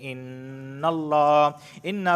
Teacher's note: نون مشدد ہمیشہ غنہ ہوتا ہے · لفظ اللہ سے پہلے نون پر زبر آیا ہے اس وجہ سے میں لفظ اللہ کو موٹا پڑھ رہا ہوں